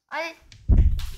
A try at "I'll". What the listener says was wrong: I'll 왜 R 발음을 냅니까? I'll 이제 I'll 을 발음을 I'll 아일 어른 혀가 뒤로 거꾸로 목구멍 쪽으로 가는 소리고 엘은 혀가 멜롱하는 소리인데 어떻게 완전 반대되는 소리인데요.